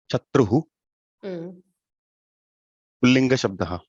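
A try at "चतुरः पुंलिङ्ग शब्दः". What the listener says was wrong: Pullinga Shabdaha. Excellent.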